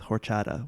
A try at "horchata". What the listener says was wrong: I'm sure what you wrote is spelled correct, but I believe the pronunciation drops the H.